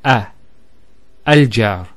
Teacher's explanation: So notice the sound in the beginning, a, al-jar. That a sound, which in English is called a glottal stop, a, is actually the hamza.